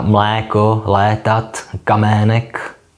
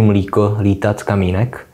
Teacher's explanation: pokud jde o dlouhé E po obojetných souhláskách, tak se stále víc toleruje jeho úžení na I.